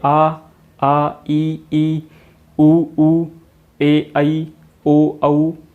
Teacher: अब जैसा कि देखिए, आप बोलिए आ, बोल के देखिए एक बार आप खुद से, आपको खुद पता चलेगा कि हमारी ना तो जीभ टच हो रही है कहीं पे, ना ही ओंठ टच हो रहे हैं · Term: स्वर